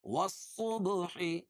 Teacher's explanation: با پر قلقلہ کیونکہ با پر جزم ہے